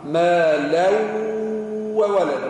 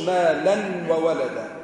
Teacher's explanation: ما دامهم متاليين هكا واحدة تلو الأخرى معمولين هكا يدل على الإدغام هكا التنوين هذاك باش ندغموه في الحرف اللي بعده ما لو وولد ما نقولش ما لن وولد ما لو وولد ادغم التنوين في الواو مع الغنة